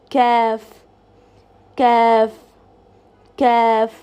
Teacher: when the last part of your tongue touches the junction between the hard and the soft palate, the letter kaf is emitted. Now have a look at the makharij image which is on your screen and try to position your tongue in the same way and say the letter kaf, kaf, kaf.